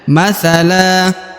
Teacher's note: huruf la seharusnya dibaca Lan tapi karena dia berada di ujung ayat dan akan berhenti atau waakaf maka huruf Lan berubah menjadi la